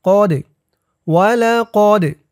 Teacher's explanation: দাল কলকলার হরফ ধাক্কা দিয়ে পড়তে হবে